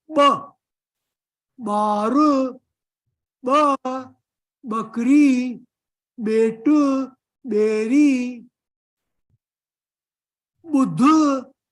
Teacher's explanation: you open the lips but you suck the air in. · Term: special sound